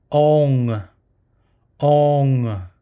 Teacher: this one has more of a longer O sound, but you add the NG sound at the end